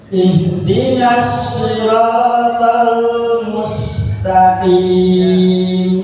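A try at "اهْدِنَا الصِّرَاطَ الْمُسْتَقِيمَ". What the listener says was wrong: Jadi itu untuk di ayat ini huruf shad lebih, shad itu makhrajnya lebih dekat sama sin. Jadi bukan seperti shin ya. Ihdinas syira, bukan udaranya nggak nyebar, tidak menyebar seperti huruf shin. Nah, huruf shin itu kan nyebar. Shi. Ya, lebih mirip huruf sa.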